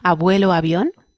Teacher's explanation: Hombre, sí, a principio de palabra, Valencia-Barcelona suena más o menos igual. Luego dentro, intervocálica suena más suavita, pero suena igual.